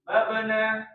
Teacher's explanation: di huruf ba ini mantulnya itu tidak tertahan ya